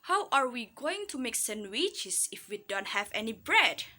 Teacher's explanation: The word bread is all information, so that we read the word bread with rising tone intonation